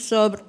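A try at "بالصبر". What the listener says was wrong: Oh, enggak gitu sober ya. Bukan sohib ya, sober ya. Pakai ro belakangnya jangan hilang.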